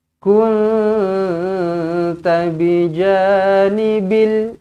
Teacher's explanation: Supaya kita tahu nun kosong bila bertemu dengan ta, kena dengungkan